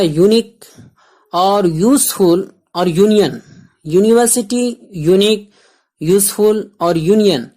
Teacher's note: واول یو تو ہے، لیکن واول کی آواز نہیں ہے، بلکہ اس میں وائی کی آواز ہے. وائی کی آواز ہے یا، اور وائی یہ کانسوننٹ میں سے ہے.